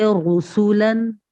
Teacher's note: Number 2, जब रॉ के ऊपर पेश हो, जैसे रसूलन, यहाँ रॉ पे पेश है इसलिए यहाँ पुर अदा किया जा रहा है।